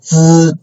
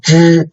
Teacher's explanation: the tip of the tongue move to the back part of the mouth